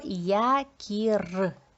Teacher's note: я на початку слова звучить як два звуки звук й і звук а й у нас завжди М'який приголосний тому малюємо дві рисочки а